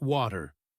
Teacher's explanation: It is the T sound changing into a D sound. We call this the flap T.